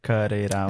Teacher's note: The flap T happens twice there